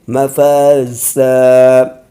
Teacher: اب فا کو اور زا کو برابر کھینچ کے پڑھیں گے کیونکہ یہاں پر الف سے پہلے زبر ہے اور یہاں پر وقف ہو رہا ہے تو الف سے پہلے زبر مان جائے گا، تو دو زبر کو الف سے بدل کر پڑھیں گے مفازا۔